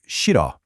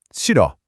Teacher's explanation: that h at the beginning is basically silent. You don't really pronounce it. So, it sounds a lot more like shid.